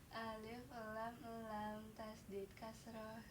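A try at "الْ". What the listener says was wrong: Kalau di atas patah ya, kasar itu di bawah.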